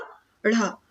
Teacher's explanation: जब हम बोलते हैं तो जीभ और पीछे की ओर जाकर झटके के साथ आगे निकलती है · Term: उच्छिप्त व्यंजन